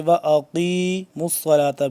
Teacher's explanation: قاف کو موٹا پڑھیں گے، وَأَقِیمُوا الصَّلَاةَ، میم کے بعد آپ دیکھ لیں گے واو ویسی ہے، الف بھی ہے، آگے پھر الف ہے، یہ سب سائلنٹ ہے۔